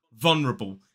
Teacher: some people will drop the dark l in the first syllable and just say vulnerable still got three syllables still stress on